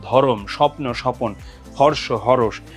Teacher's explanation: সংযুক্ত ব্যঞ্জন ধ্বনির মাঝখানে একটা স্বরধ্বনি চলে আসে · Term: মধ্য স্বরাগম